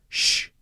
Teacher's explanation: different and it sounds a little lighter and thinner the Shh the circular shape of your mouth creates that a thicker sound a heavier sound